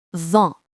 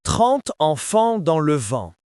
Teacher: En and en are the same nasal sound.